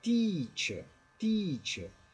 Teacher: E a gente falou na outra aula que o ditongo EA corresponde ao I do português, só que um I esticado. Então não é teacher, é teacher, teacher.